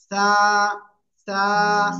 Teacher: ওকে, সবাই একসাথে বলেন তো এটা কি হলো, কি অক্ষর হলো এটা? জিপার আগা উপরের দুই দাঁতের আগায় লাগিয়ে নরম করে একটু বাতাস বের করে উচ্চারণ করতে হবে।